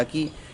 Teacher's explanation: esa I se mantiene aguda, en el mismo tono, no baja